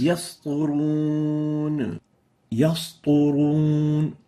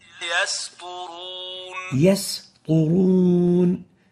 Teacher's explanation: you have to make sure to keep the sin attenuated and avoid mixing it with the sad